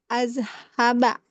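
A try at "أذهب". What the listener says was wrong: Azhabu. Jadi terakhir itu dhammah. Itu maknanya masa sekarang.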